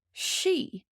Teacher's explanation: the i fada has an ee sound, long e